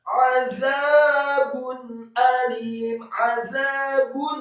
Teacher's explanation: ainnya ditekankan keluar dari tenggorokan, fathah 1 harokat